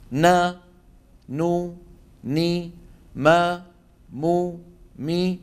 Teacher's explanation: تكون الغنه انقص يعني اقصر ما تكون في النون والميم